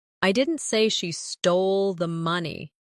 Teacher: Emphasize didn't. I didn't say she stole the money, meaning you are denying it. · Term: emphasis